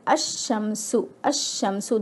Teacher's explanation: The next comparison is the huruf shamsi. Lam ta'rif al is only in written form. While reading, it's a silent letter. For example, if I have al plus shamsun, alif lam al plus shamsun, the word will be read as ash-shamsu, ash-shamsu. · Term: sun letters